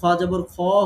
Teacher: আর যখন মোটা হচ্ছে তখন দেখেন খ জবর খ হচ্ছে, অ হচ্ছে, আ হচ্ছে না।